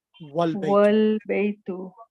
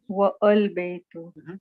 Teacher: Here the A is pronounced, but if it is preceded by wa, meaning and a, and the A is dropped and the phrase is pronounced wal baytu, not wa al baytu.